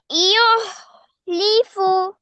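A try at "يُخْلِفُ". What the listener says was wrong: না, এটা হার মতো শোনা যাচ্ছে । খ খ ইখ ইখলিফু ইখলিফু।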